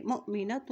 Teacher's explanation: یہاں دیکھیے حمزہ کے اوپر جزم ہے تو یہاں پہ جھٹکا دے کے ادا کریں گے